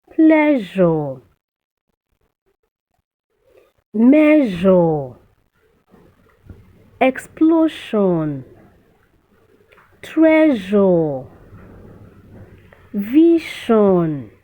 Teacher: You notice a vibration from your vocal cord. Just place your hand on your throat, you get a vibration as you pronounce them. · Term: ZHU consonant sound